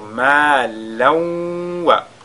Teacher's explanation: Ici, malan wa, nous avons tanwin, n'est-ce pas, sur la lettre waou. Tanwin va fusionner dans la lettre waou. On fera idgham bi ghunna cette fois-ci.